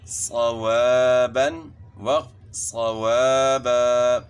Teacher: صاد جو ہے نا موٹا کرنا ہے